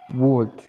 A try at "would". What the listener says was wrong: Don't say would. Okay? Drop the L. Remember, the L doesn't sound. The L doesn't sound. So repeat after me. Would.